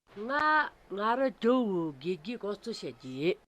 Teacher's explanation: gege in the first example has a low rising pattern, gege.